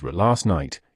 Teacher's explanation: In casual American conversations, ending t's and d's sounds are almost always completely deleted if the next word begins with a consonant. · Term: elision